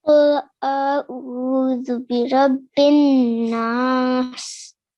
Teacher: So not the prolonging it is not a correct word, but keeping the noon sound for 2 seconds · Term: ghunna sound